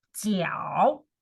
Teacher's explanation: Also third tone, you go down first and then you go up.